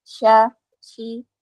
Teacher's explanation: Ada sebaran udara di dalam ya. Sya terasa ada udara yang menyebar. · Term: syin